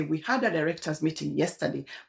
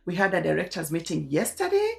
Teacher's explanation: your phrases come through with invisible question marks where you're actually supposed to be putting a full stop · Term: uptalk